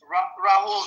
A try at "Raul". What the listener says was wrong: Carlita, you just don't say the H, okay? It's Raul.